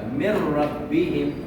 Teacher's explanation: نون ساکن کے بعد را ہے، را بھی حروف یرملون میں سے ہے. ادغام ہوگا، غنہ نہیں ہوگا